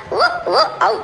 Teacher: ఓ ఓ ఔ ఈ మూడు అక్షరాలని కంఠోష్ట్యాలు అంటారు